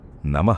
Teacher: వేగంగా కలిపి చదివేస్తారు అది తప్పు మధ్యలో నమః [గొంతు సవరించుకోవడం] అన్నప్పుడు అక్కడ విసర్గ ఉంది కాబట్టి పలికేటప్పుడు నమః అని ఒక చిన్న గాలిని వదులుతూ నాభిలోంచి ఆ శబ్దం